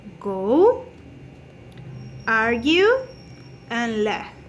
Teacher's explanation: So this is voice because we have vibration in the vocal folds, The place of articulation is a linguovelar because we have contact of the tongue with the velum, So is the manner of articulation is stop or plosive. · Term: g sounds